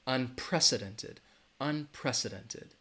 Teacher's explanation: word right there unprecedented it has five syllables all right unprecedented the stress is going to be on that second syllable